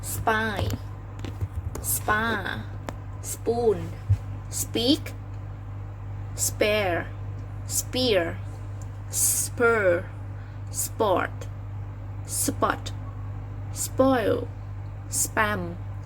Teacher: After the S consonant, the p sound is also unaspirated